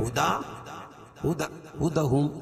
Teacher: ہدا کھڑا زبر قائم مقام الف مدہ کے، اس کو ایک الف کے برابر کھینچ کے پڑھیں گے۔